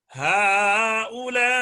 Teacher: جی جی دیکھو میں آپ کو پڑھ کر بتاتا ہوں، میں اب ہا الا کو پڑھتا ہوں، پہلے میں قصر کروں گا اور الا میں توسط کروں گا 2 الف